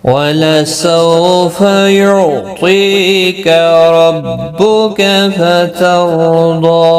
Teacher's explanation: فَتَرْضَى را بھی پر پڑھا جائے گا زبر کی وجہ سے، ضاد مستعلیہ ہے اور اس کے اوپر کھڑی زبر بھی ہے، ایک الف کی مقدار کے برابر کھینچ کر وقف کریں گے